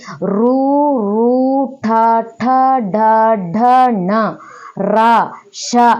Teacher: గమనించినట్లయితే మూడవది ఋటు రషానాం మూర్ధః అంటే మూర్ధన్యాలు మూర్ధన్యాలు మూర్ధన్యము అనగా ఏంటంటే నాలుక యొక్క కొనభాగం నుండి వెలుబడేటటువంటి ధ్వనులకే మూర్ధన్యాలు అని పేరు